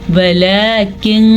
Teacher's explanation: نون ساکن کی آواز کو ہم چھپا کے پڑھیں گے غنّے کے ساتھ پڑھیں گے. اسے چھپا ہوا غنّہ بھی کہہ سکتے ہیں. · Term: اخفا کا غنّہ